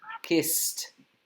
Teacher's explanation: No, con la D es kiss. No se pronuncia con la D, se pronuncia con la T.